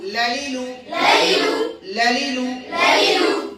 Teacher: লাম উচ্চারণ করার সময় রয়ের মাখরাজের দিকে ধাবিত হবে জিহ্বাটা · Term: ইনহিরাফ